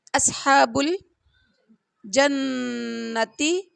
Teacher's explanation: نون کے اوپر ہم نے غنہ کرنا ہے، نون مشدد پر غنہ ہوتا ہے ایک الف کے برابر